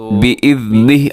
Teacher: بإذنہ وقف کیا ہے تو بإذنہ آخر میں ہا کو ساکن کر کے پڑھنا ہے، بإذنہ ایسے نہیں پڑھنا۔